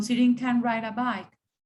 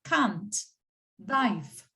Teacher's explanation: Cuando estamos hablando en afirmativo, apenas si se oye can, apenas, porque el sonido es la schwa, es un sonido así que sale detrás de su garganta.